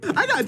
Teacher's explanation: here we have what we call an american t which makes the t morph into a soft d this happens when you have a t sound between two vowel